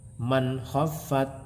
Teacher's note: Selanjutnya adalah man khaffat, ada nun mati bertemu dengan huruf kha, di mana huruf kha ini adalah salah satu huruf idhar halqi, sehingga ketika ada nun mati bertemu dengan kha maka bacaannya harus dibaca jelas, artinya dibaca idhar, tidak boleh mendengung